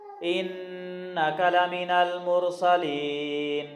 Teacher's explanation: ان یہاں پہ غنہ کریں گے، نون پر شد ہے اس لیے